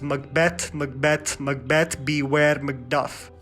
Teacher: The unenunciated syllable is before the enunciated syllable. So the emphasis is on the latter half of the word, creating that rhythmic tone. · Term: iambic pentameter